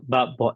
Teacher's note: before the double consonant, this long vowel becomes the short